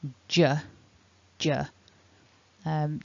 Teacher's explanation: as i let the tongue drop i make the sound and i vibrate my throat at the same time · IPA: /ʤ/